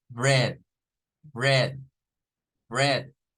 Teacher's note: es una E abierta, bread, bread, bread